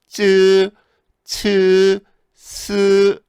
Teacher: 혀끝이 앞니 뒤에 가요. 그래서 쯔, 츠, 스 이렇게 얘기를 하는 거죠